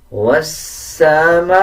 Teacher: بڑا مد کا مطلب ہوتا ہے جب کسی الفاظ کے اوپر بڑا مد آ جائے اس الفاظ کو 5 سیکنڈ لمبا کر کے پڑھا جاتا ہے. اب جیسے یہ میم کے اوپر زبر ہے، اس کے بعد الف ہے اور الف کے اوپر مد ہے.